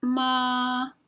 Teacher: the first tone is a high level tone it remains at approximately an even pitch so i will say ma so i'm almost at my highest